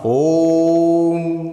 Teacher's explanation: ओम को लंबा बोलना, ओम भूर्भुवः स्वः तत्सवितुर्वरेण्यं भर्गो देवस्य धीमहि धियो यो नः प्रचोदयात्। ओम है, इसमें 3 मात्रा का समय है, ठीक है, इसलिए इसको लंबा बोलना